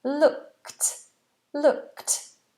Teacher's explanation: Notice how the ed on looked is not looked, but it's sounded like a T.